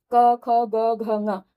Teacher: कैसे, इसको फिर से देख लें कि ये क वर्ग जो है ये इसका उच्चारण स्थान कंठ होता है, तो पांचों ही वर्णों का उच्चारण स्थान भी कंठ ही होगा।